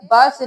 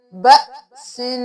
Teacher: जब भी हमजा के ऊपर जज्म होगी तो हम झटका दे के पढ़ेंगे, बा सिन नहीं करेंगे। बा जबर हमजा ब, बा जबर हमजा ब, सीन दो जेर सिन, ब सिन।